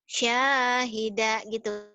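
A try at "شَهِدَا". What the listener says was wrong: Syahida, nggak ada yang panjang. Syahida,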